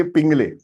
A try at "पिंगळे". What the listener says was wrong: पिंगले, पिंगळे, अळ आता है पिंगळे।